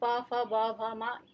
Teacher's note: प जो है वो दोनों होठों से मिलने पर उच्चारण ध्वनि निकलती है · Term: ओष्ठ